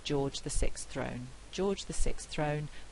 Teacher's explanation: in rapid speech what we would find is that we'd actually lose this th